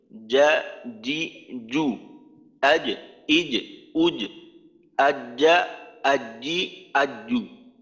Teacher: আর একটা হলো যে উচ্চারণ আগে তো মাখরাজটা মিলিত, অর্থাৎ জিহ্বার মধ্যখানটা উপরের তালুর সাথে মিলাইতে হয়। তো মিলাবো যখন জিমটা আমরা উচ্চারণ করব, খুবই দ্রুত জিহ্বাটাকে উপরের তালুর থেকে পৃথক করে দেব। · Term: জিমের উচ্চারণ